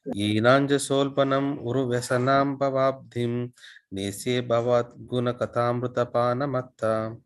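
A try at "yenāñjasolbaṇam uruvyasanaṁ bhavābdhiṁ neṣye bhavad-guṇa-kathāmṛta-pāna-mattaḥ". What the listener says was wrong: The tune, third line slow. So the third line, you should slow down, Prabhu. That is the only difference.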